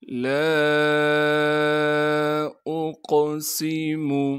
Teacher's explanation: لام کو 3 الف کے مقدار کھینچیں گے کیونکہ لام کے بعد الف مدہ ہے